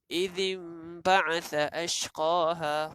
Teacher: Daripada nun mati ni kita nak sebut ba, dia akan seumpama nak sebut mim. So alang-alang sebutlah mim terus. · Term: hukum iklab